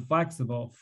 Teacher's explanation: to preserve the amount of pronunciation time between stressed syllables so in flexible flex is a stress syllable and bull has a secondary stress to it so we try to say that in between part really quickly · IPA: /ə/